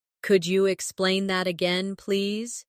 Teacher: Could you sounds like could ya, naturally.